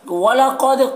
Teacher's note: क़ाफ को पुर पढ़ेंगे, दाल में कलकला करेंगे।